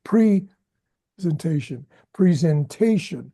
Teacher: you don't put the emphasis on the first syllable pre like the tendency is to put preentation presentation.